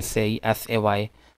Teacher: So we say that the tongue is gliding from mid to higher position.